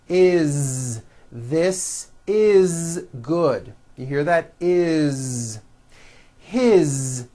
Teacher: all these words that I'm going to show you now are written with an S however they are all pronounced with a voiced Z